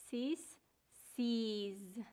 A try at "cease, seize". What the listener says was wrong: Very nice. Good job.